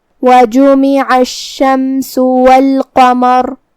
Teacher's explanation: کلمت الشمس میں شین پہ تشدید ہے، لہذا دو حرف کے برابر ہم حرف الشین کو پڑھیں گے کیونکہ تشدید کی اصلیت دو حرف ہے.